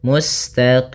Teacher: ada bacaan Mad Arid di sukun itu boleh kita panjangkan dua harakat boleh empat harakat boleh pula menjadi enam harakat Mad Arid di sukun Kapan terjadinya yaitu ketika akhir bacaan kita